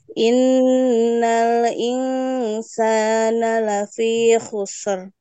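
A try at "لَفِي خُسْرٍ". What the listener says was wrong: Oke, masih dibaca khusr. Seharusnya bukan ditarik ke ser ya, Bu ya, tapi di apa namanya itu dimixkan dengan ro khusr. La fi khusr.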